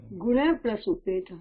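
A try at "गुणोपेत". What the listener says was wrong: गुणः, don't try to visarga in between. गुणः, guna plus upeta, gunopeta, just a gunopeta. This is also a samasta padam. Guna plus upeta, gunopeta.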